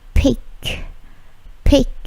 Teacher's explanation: Bunyi K-nya memantul ya